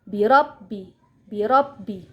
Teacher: Di sini terdapat huruf ba yang bertasydid. Jadi, kita tidak boleh membacanya terlalu ditahan dan boleh membacanya hanya sedikit ditekan.